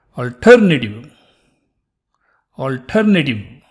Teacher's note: the last e is sort of almost dropped